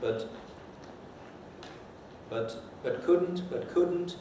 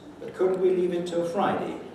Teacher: a pre-head which has no mark is a low prehead